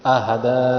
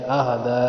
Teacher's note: دال پہ چھوٹا مد ہے، دو الف کی مقدار کھینچا ہے،